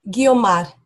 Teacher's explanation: It's a rolled R there, isn't it? Just a single R.